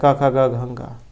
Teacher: अकार और आपके जो कवर्ग में आते हैं क ख ग घ ङ और विसर्ग है, इनका जो उच्चारण स्थान है ये कंठ से होता है। तो कंठ वर्ण इनको कहा गया है।